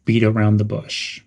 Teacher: Some pronunciation tips would be to stress beat and bush.